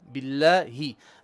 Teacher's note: Bottom throat. This should be bottom throat ha, not middle throat ha.